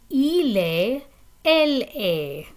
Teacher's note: The pronunciation is exactly the same. The T is silent